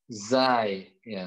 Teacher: Huruf zai juga masih sama, makhrajnya adalah ujung lidah ketemu gigi seri bawah.